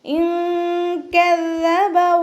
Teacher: ദാലിന് ശ്രദ്ധ വന്നിട്ടുണ്ട്. 2 ഹർഫുകൾ ഉച്ചരിക്കുന്ന കനം കൊടുക്കുക.